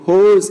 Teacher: the back of the tongue is raised to a position between half open and half closed position. The lips are rounded, so this is a rounded vowel. This is a long vowel comparatively O, but the length is reduced before voiceless consonants.